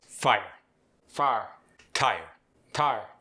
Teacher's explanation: The long I becomes an ah sound.